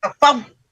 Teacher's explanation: Fad ditahan, bukan fabda. Nggak lepas